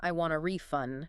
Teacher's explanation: As a noun, I want a refund. The stress is usually on the first syllable.